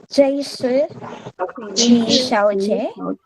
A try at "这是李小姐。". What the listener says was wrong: Not J, huh? This should be 这是. Get rid of the I in 这是 this is 这是 小姐 it's third tone again. So third tone, the first two always become second tone. 李小姐 the last one is third tone 哈。李小姐，这位是李小姐。The reason they use 这 is this is because they're the same level.